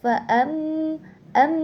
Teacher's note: di situ ee terdapat hukum tajwid gunah musyaddadah karena ee terdapat mim tasdid. Jadi dibacanya itu ee dengan gunah atau dimasukkan dua harakat.